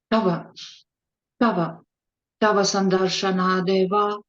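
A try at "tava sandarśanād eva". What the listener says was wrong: Tava-san. Yeah, except now you got the wrong key. Tava Sandar Shanadeva. Tava Sandar Shanadeva. Tava Sandar.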